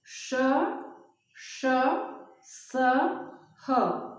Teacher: जिन व्यंजन वर्णों के उच्चारण के समय घर्षण उत्पन्न होता है, उन्हें ऊष्म व्यंजन कहते हैं